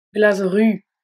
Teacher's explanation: Glasru. Le S de glace s'adoucit et se prononce Z car il est suivi de la consonne sonore R.